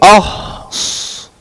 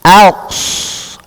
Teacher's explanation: we start making our mouth round by the alif already, or rather the hamza